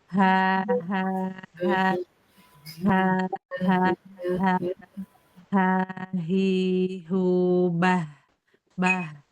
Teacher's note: Nah, jadi nah ini disebutnya H besar. Jadi, H besar itu yang keluarnya dari pangkal tenggorokan.